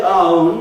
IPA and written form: ˈɑː ˋəʊn (our own)